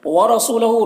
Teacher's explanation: را کے اوپر زبر ہے، تو را کو پر پڑھیں گے